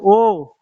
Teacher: जब ओ को बोलते हैं तो जीभ का पीछे वाला हिस्सा काम करता है, ओठ तो आगे आ जाते हैं। तो ये ओ जो होता है वो कहाँ आता है, फर्स्ट स्वर में आता है।